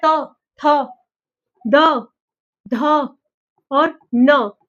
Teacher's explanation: जो जीभ होगी वो दांतों को छू के जाएगी। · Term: दंत्य